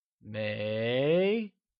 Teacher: It is said with a mid-rising tone, like may.